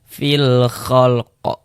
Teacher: Kalau kita mengaji Al-Qur'an, kemudian kita berhenti atau berwakaf tepat di huruf yang tidak dibaca panjang, hurufnya kita sukunkan, hurufnya kita matikan. Ini huruf qaf, kita berhenti di huruf qaf, tidak dibaca panjang, ya kita matikan huruf qafnya. Sehingga kita baca fil khalq. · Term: huruf qalqalah